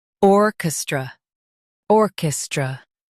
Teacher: or kis tra orchestra or kis tra orchestra Stress or and soften kestra.